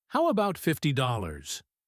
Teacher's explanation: Let's think about intonation one last time. When you make an offer, your voice usually goes up at the end to show it's a question or a suggestion. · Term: Rising intonation